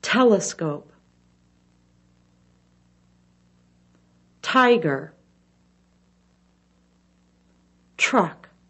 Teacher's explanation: with more of the bottom than the top front teeth shown the tip of the tongue touches the top of the mouth air is blown through quickly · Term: t sound